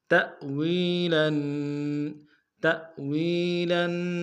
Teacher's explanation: تأویلاً، تأویلاً، تا کے ساتھ حمزہ ہے، جھٹکا دیں گے، واو کو یا کے سامنے لیں گے، واو مدہ ایک انداز میں کھینچیں گے